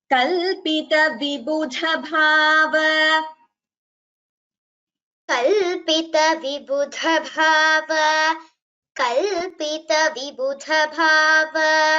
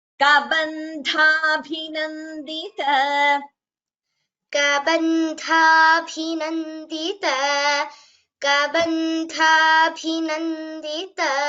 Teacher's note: vibudha, bhava, dha and bha are Mahapranas, and kabandhabhinandita, dha and bhi are also Mahapranas